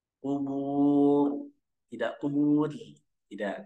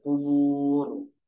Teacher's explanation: sukun yang kedua hukum ro di situ rnya dibaca tebal nah rnya dibaca tebal atau tafkhim